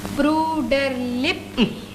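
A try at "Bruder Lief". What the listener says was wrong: लिप नहीं, लिफ। शाबाश, सिर्फ हवा ज्यादा हो।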